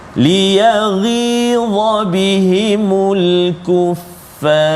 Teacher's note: Ra saja tebal, jangan ajak fa tu. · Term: tafkhim tebal